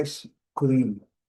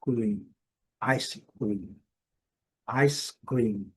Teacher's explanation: o M bem destacado e pronunciado com a boca fechada ao final